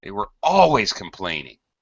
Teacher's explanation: In spoken English, by the way, we're probably going to add a lot of stress to the adverb.